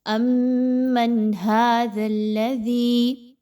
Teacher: امن ھذا الذی، دال ہے، سافٹلی پڑھیے، نرمی کے ساتھ پڑھیے اور دال کو لام کے ساتھ ملائیے تو مضبوطی تو ہو لیکن دال کے حرف میں بہت نرمی ہو، سختی نہ ہو، زا کی طرح اس کو نہیں پڑھنا۔